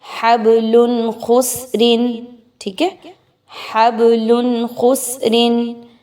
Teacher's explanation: آپ تنوین کی آواز کو بہت ظاہر کر کے پڑھیں گے، کلیئر پڑھیں گے ود آؤٹ غنہ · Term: اظہار